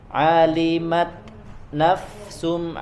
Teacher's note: ketika dari huruf ta ke na yaitu ada jedanya, Alimat nafsum ya, karena dia sekali lagi syiddah.